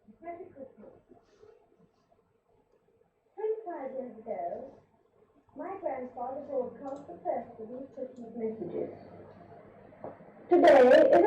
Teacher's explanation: very clipped very high very little emotion very flat vowels